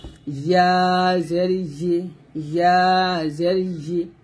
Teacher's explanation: জিহ্বার মধ্যখান উপর তালুর সঙ্গে লাগে